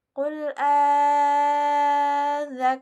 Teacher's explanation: Nah, di sini terdapat dua hamzah yang bertemu. Maka cara membacanya sepanjang 6 harokat. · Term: mad farqu